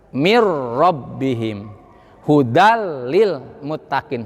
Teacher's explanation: Kalau idgham bilaguna memasukkan nun sukun atau tanwin ke huruf lam dan ro, sifat dan mahrojnya sudah tidak ada lagi. Mir rabbihim hudal lil muttaqin, sifatnya nun tidak ada gunanya.